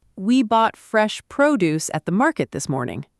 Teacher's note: Produce, stress on the first part, is a noun and it means fruits and vegetables, especially fresh ones from a farm.